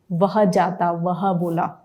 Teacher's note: देखिए दांत होठ पर स्पर्श करते हैं और वायु निकलती है, तो दांत और होठ दोनों का प्रयोग हुआ, इसलिए इसको दंतोष्ठ्य कहा गया।